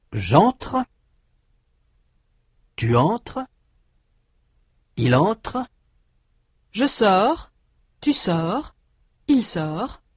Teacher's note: du point de vue de la prononciation, les trois personnes du singulier de ces verbes sont identiques